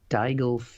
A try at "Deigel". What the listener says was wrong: Yeah, I'm sure he pronounces it at least quicker than that. Deigel goes up less at the end when he says it.